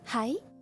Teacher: You still raise up the last part a little bit. But if it is not a question, then it's always hi.